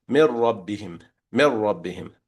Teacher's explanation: You see when I say mir rabbihim, the nasal part and the tongue part of the noon both disappear. The noon is completely gone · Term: complete idgham